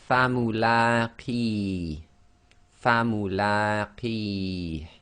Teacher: the long vowel kasra ya with the qi, and again the last letter there is being read as sakin, so we can do this as 2, 4 or 6 long